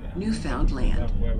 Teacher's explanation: They will tell you that the name of their country is pronounced with the accent on the last syllable, Newfoundland.